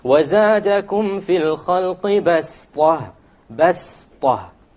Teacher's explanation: you don't pronounce it as a sad, you pronounce it as a sin, even though it is written as a sad.